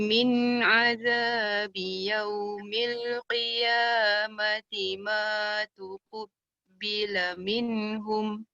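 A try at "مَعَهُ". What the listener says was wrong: Tadi macam ma'ahu tu macam terpendek sikit Mas. Panjangkan yang hu yang kedua Okay, sekali lagi bacaannya.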